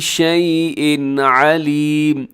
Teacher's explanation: تنوین کے بعد عین حروف حلقی میں سے ہے تو یہاں پر اظہار حلقی ہوگا، یعنی آپ نے اس کو تیزی سے پڑھ دینا ہے، یہاں غنہ نہیں کرنا